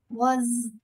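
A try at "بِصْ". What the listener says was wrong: No. Ba has a kasra, remember? Bache, ba has a kasra. You are changing the sound of ba. Why? Change the sound of zod, not ba. Bill. Bill. Bill. Where are you touching your tongue in the letter zod? Left side of the tongue will touch left roof of the mouth. The letter Zod.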